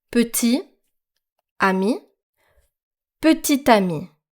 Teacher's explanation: Now you can hear the T at the end of petit. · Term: liaison